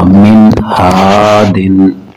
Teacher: نون ساکن پر ہم غنہ نہیں کریں گے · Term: اظہار